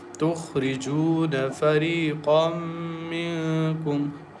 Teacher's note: Kha is very thick and heavy letter. Ra is thin letter. تخرجون فريقا منكم.